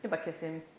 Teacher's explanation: but you could hardly hear the ba